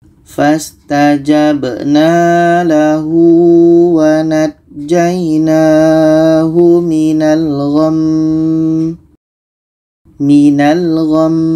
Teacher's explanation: Nun tasydid dengung, mim tasydid juga berdengung. Jadi kita dengungkan mim ini baru matikan.